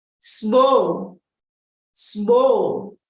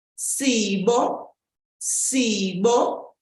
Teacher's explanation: So simply the first two syllables with the I dropped.